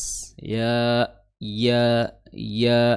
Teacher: makhrajnya adalah di tengah lidah bertemu dengan langit-langit atas